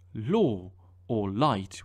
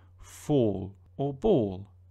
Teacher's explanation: In words like law or light, where it's at the start, it sounds a bit different than in words like fall or ball. Those sound much, much darker. But you can't really mix them up, because in English, light L's only come in the beginning of a syllable and dark ones at the end. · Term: two of those